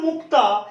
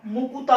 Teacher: যুগ্ম ব্যঞ্জনের মাঝখানে একটা স্বরধ্বনির আগমন ঘটেছে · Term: স্বরভক্তি